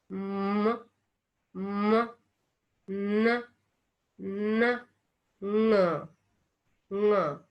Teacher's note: This uvula is lowered and the mouth cavity is shut. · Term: nasal sounds